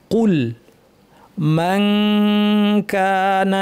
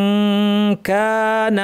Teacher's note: কুল মান কানা, এটা হচ্ছে ইখফা, নুন সাকিনের পর কাফ আছে, তাহলে জিহ্বাকে কাফের মাখরাজে লাগিয়ে নাক থেকে গুণনা করতে হবে